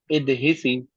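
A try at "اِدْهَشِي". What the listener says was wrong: इद। नहीं, यहाँ पर आपने जबर से जेर कैसे कर दिया? इद ह ही नहीं, इद ह शी।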